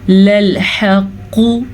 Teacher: لَلْحَقُّ ہا کا تلفظ دھیان سے پڑھنا ہے اور قاف کو پر پڑھنا ہے کیونکہ قاف حروف مصالیہ میں سے ہے